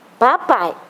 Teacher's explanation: a vogal vem primeiro e a semivogal vem depois esse processo está crescendo ou decrescendo de crescendo